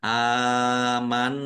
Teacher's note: Nun tasdid bacaan ghunah atau mendengung. Dibaca mendengung ditahan biar tampak mendengungnya.